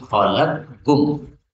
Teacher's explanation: Boleh dibaca idgham menjadi khalaqkum. Jadi qafnya hilang menjadi kaf.